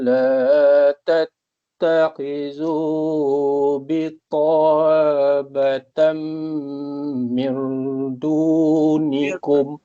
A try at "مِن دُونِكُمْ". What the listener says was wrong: Kalau mir, dia dah masuk kat ra, ni masuk kat dal. Ambil balik min. Min dunikum la, sambung.